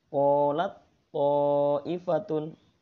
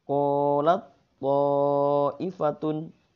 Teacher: karena ini idgham mutajanisain maka suara ta hilang